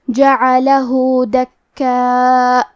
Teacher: کلمت دکاء میں کاف پہ تشدید ہے، تو ہمیں 2 حرف کے برابر کاف کو پڑھنا ہے. کیونکہ الف پہ مد کا علامہ ہے اور یہ مد واجب متصل ہے، تو ہم اپنی آواز 4 مد کے برابر لمبی کریں گے. · کلمت جعلہ میں ہا پہ الٹا پیش ہے، تو ہم مد صلہ صغرا کو ظاہر کریں گے اور اپنی آواز 2 مد کے برابر لمبی کریں گے